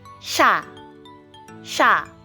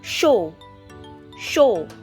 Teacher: I did not pronounce the Y character that was supposed to be present in these vowels because of this S sound. So wherever you see S in front of these particular characters, it's pronounced as SH.